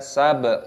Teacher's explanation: Finnahari sabhan tawila. Sab, baknya berharokat sukun, diqalqalah dipantulkan suaranya, dibaca sab.